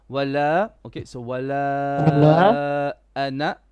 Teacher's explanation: So wala has a mud of 4 haraka. Ana is short.